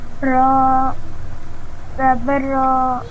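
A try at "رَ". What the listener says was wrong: Don't stretch the sound, please. Ra, zabar, ra.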